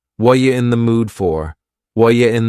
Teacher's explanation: The word are is gone, and the word you has been reduced to ya. So when we link together, what and you, super fast.